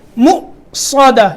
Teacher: یہ واو کے اوپر حمزہ ہے، وہ حمزہ پڑھیں گے، واو نہیں پڑھیں گے، ٹھیک ہے. مؤصدہ، یہاں بھی اسی طرح جھٹکا دینا ہے جیسے حمزہ ساکن کے اوپر دیا جاتا ہے.